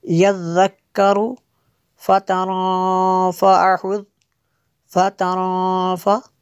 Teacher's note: نون ساکن ہے اس کے بعد فا حروف اخفا میں سے ہے تو یہاں پہ اخفا ہوگا